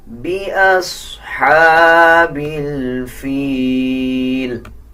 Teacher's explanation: صاد کے اوپر جزم ہے، صاد کو پچھلے الفاظ کے ساتھ ملا کے پڑھا جائے گا اور صاد موٹے حروف میں سے آتا ہے۔ اکثر لوگ صاد کو پر یعنی موٹا نہیں پڑھتے، اس کو پر پڑھنا چاہیے